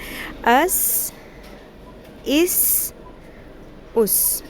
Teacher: سین کی آواز میں سیٹی کی آواز ہوتی ہے